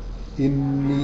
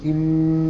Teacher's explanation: لازم تقول إني، وتحس إن الغنة دي بتطلع من الإيه، من الأنف